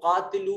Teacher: قاف حروف مستعلیہ میں سے ہے، اس قاف کو موٹا کر کے پڑھیں گے